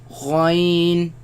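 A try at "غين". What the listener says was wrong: Again, the ya sound. Do not produce the nasal sound. Ghai. Now, but where do they come from? They come from the top part of the throat, right? Where the root of the tongue raises against the uvula and produce the sound.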